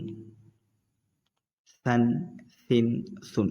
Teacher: یاد رکھیں اس کو نرمی سے پڑھیں گے، یعنی دونوں دانتوں کے بیچ سے اپنی زبان نکالیں گے، پتلا بالکل نرمی سے پڑھیں گے